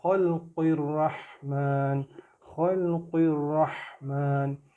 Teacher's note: قاف زیر قی کو ہم را کے ساتھ ملا رہے ہیں